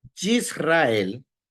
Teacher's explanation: ¿Qué dice la regla? Que no se pronuncie ese Sheva, porque antes del Sheva hay una vocal corta.